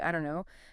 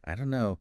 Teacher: the don't and no just merge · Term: linking